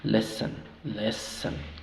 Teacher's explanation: Y la segunda sílaba es una sílaba débil. Por lo tanto, esa O no suena O. ¿Sí? O no suena A. Suena reducido a un schwa.